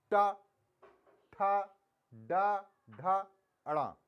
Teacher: में हमारा मूर्धा उच्चारण स्थान क्या है मूर्धा है देखिए ट जीव है ना वो सीधे उल्टी जाती है जो तालू है उससे पीछे मूर्धा प तो ये हमारा ट